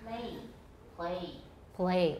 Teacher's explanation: But actually, I darken a lot of my L's, no matter where they are.